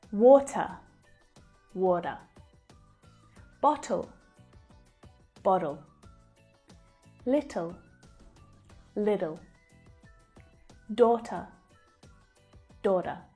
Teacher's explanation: Americans tend to pronounce a flap T when the letter T is between two vowel sounds, like in these words. The flap T is a flatter sound that actually sounds more like a D.